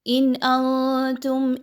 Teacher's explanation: حمزہ کا حرف حروف حلقی میں سے ایک ہے اور اگر ان میں سے کوئی ایک حرف آ جائے حمزہ ہا عین ہا غین خا میں سے تو یہاں پر نون کی آواز کو بڑا کلیئر پڑھا جائے گا. اظہار کا رول فالو کیا جائے گا.